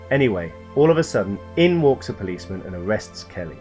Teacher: note the heavy sentence stress on the word in